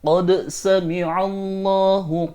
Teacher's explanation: Qad di sini bertemu dengan sin, maka dal di lafaz qad ini wajib dibaca izhar atau jelas